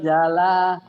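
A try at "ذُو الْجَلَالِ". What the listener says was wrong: Zalnya gitu. Zalnya agak cedal dikit. Zul jala.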